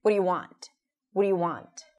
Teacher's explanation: when we hear it, it sounds just like one mumbled word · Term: reductions